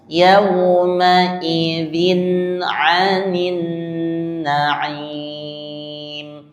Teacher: Yauma idzin itu tanpa tertahan atau gunnah. Ya, tanpa gunnah. Dibaca jelas. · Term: izhar